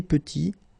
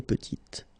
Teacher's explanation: Final T is not pronounced, and then when you add this E at the end, you get the sound T